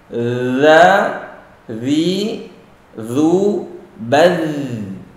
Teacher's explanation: Huruf untuk za ada sifat rakhawah, mengalirnya suara. Baz, dan enggak boleh qalqalah. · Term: huruf za